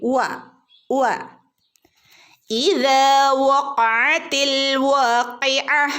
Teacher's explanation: ഇദാ വഖഅതി വ എന്ന് നമ്മൾ ഉച്ചരിക്കുമ്പോൾ ചുണ്ടിനെ റൗണ്ടിൽ സർക്കിളാക്കിയിട്ട് വേണം ഉച്ചരിക്കാനായിട്ട്. ഓക്കെ, ചുണ്ടിനെ റൗണ്ടാക്കി പിടിക്കുക, വട്ടത്തിൽ.